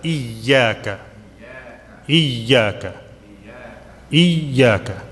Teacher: Little bit stress on the ya because it has a shadda.